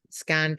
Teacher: N and T are articulated in the same place